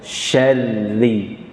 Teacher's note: Kaidah pengucapan ro bertasydid adalah membaca tanpa mantulan.